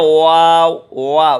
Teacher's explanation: یہ ہونٹ آپ کے دونوں لپ جو ہیں اوپر نیچے کے راؤنڈ سرکل میں آ جائیں گے، یعنی گول ہو جائیں گے، آپس میں ملیں گے نہیں۔